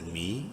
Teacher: یا مدہ ہے، میم کو ایک الف کے برابر لمبا کریں گے